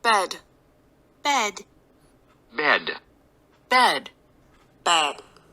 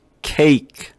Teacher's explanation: bed 할 때 이 cake보다는 이의 간격이 조금 더 벌어져요